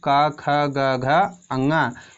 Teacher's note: ये जो है कंठ से बोले जाते हैं।